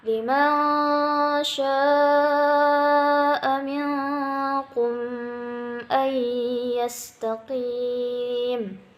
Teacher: nun mati bertemu sya. Hukumnya adalah ikhfa, samar.